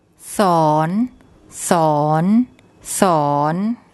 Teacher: It ends with an N sound, so that's a live syllable. So a high class initial consonant and a live syllable makes a rising tone.